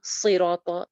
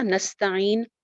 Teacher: نستعین یا صراط اس کا ان دونوں کے سین میں فرق رہے گا. صاد موٹا حرف ہے، اس کو موٹا پڑھنا ہے، مخرج وہی ہے کہ نیچے کے 2 دانتوں میں زبان لگے گی، لیکن سین باریک ہے